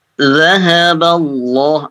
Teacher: Allah lamnya tebal ya. Lafzul jalalah tebal.